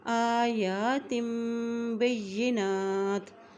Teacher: با کے زبر کو یا سے ملائیں گے کیونکہ یا کے اوپر شد ہے